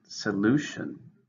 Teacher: three syllables stress in the second